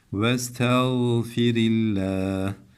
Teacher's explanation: Allah lafzının lamını da ince okuyalım